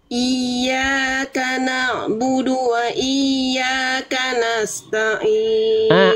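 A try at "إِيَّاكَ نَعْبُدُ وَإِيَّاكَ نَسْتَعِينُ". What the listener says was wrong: Ainnya kurang. Ain. Oke, taknya ini jangan masuk ke ta'in, enggak, tapi ta'in. Tak dulu baru ain. Coba kita lafalkan huruf ain, Bunda. Ain kasrohnya Bunda kurang. Ain kasroh Bunda latih lagi. Sama dari tengah tenggorokan.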